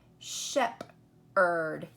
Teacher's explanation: we don't really say it that way we just say Sheppard you just hear the ER and the H is silent